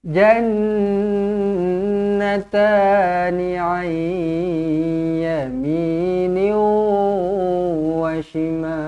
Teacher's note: Nun kosong bertemu dengan ya, masukkan dan dengung.